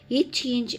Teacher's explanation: இரு மெய்களும் நாவின் இடைப்பகுதி நடு அன்னத்தின் இடைப்பகுதியை பொருந்துவதால் பிறக்கின்றன